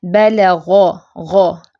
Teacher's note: فتحہ کے ساتھ جو ہے غین کی آواز زیادہ موٹی ہے، دیکھیں بلغ، غ، جب ہم نے پیش کے ساتھ پڑھا تو پھر اس سے کم ہو گئی اس کی موٹائی، ٹھیک ہے۔